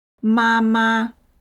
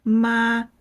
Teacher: Both syllables are strong, both carry full weight, and it ends up sounding a bit stiff. · In natural Chinese, it sounds more like ma. The first syllable is clear and strong, and the second one becomes light and quick. It almost feels like it just drops gently at the end. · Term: neutral tone